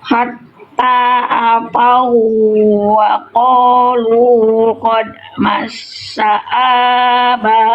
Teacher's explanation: Ini bukan idgham bigunah. Ini idgham mutamilin wunnya dileburkan ke wau berikutnya. Kalau ada wau tasdid dinaber bukan ditahan.